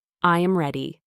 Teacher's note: Notice the natural downward inflection at the sentence's end.